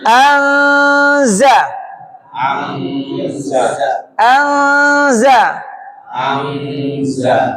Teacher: za itu di ujung lidah dekat gigi seri bawah dia enggak nempel ke mana-mana. An an ujung lidahnya ngambang. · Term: ikhfa